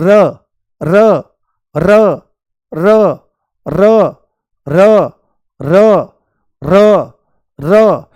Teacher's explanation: बहुत हल्की सी टच होती है उसकी टिप पॉइंट, ऐसे आगे लगती है और लुढ़कती हुई सी मालूम होती है ना, मुंह में लुढ़कती हुई सी आगे मालूम होती है। और जब आप र बोलते हो तो ऐसे कंपन भी उठता है · जैसे ही बोलो र र र र र र र र र, तो आप इस चीज को नोटिस करो ध्यान से, आंख बंद करके, कि जीभ तुरंत ऐसे चलती है, आगे की तरफ चलती है, और चलने के साथ में ही ये कहां लगती है, ऊपर वाले मसूड़े पर लगती है। बहुत हल्की सी टच होती है उसकी टिप पॉइंट, ऐसे आगे लगती है और लुढ़कती हुई सी मालूम होती है ना, मुंह में लुढ़कती हुई सी आगे मालूम होती है।